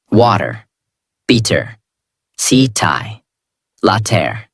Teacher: In these words, the mouth does not stop strongly on the tea. The tongue touches quickly and moves on. That is why it sounds softer. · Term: soft T